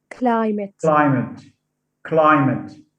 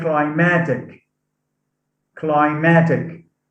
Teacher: here is that because of the influence of the suffix ic stress is shifted from the first syllable to the second syllable · stress is shifted from the first syllable to the second syllable in the stem. So we say climatic, climatic, stress on climatic.